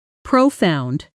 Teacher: Stress clearly on the second syllable.